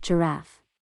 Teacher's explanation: Iambic, stress on the second syllable of a two-syllable word